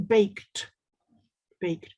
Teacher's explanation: when you have the ed combination you'll hear more of a t sound